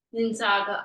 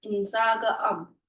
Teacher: That first N sound will fall off